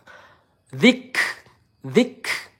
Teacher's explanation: apabila kaf sukun itu ada sifat hamas ya, ada udara lembut yang keluar